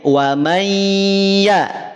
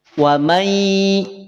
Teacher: Datang huruf ya setelah nun sukun, maka yang semula an dia akan melebur menjadi ai. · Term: idgham